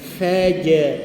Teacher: Dia berbeza dengan huruf jahar tertahan nafas, dia hams angin lepas.